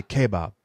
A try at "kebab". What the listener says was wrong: It's not, no. There's a little bit more of the emphasis on the E.